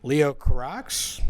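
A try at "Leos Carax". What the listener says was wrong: Cara. I'd say Cara. I'd say the X is silent.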